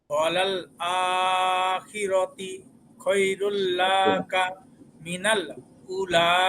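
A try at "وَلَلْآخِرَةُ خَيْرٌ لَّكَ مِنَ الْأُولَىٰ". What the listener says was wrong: জি আখিরাতে না আখিরাতু। আখিরাতু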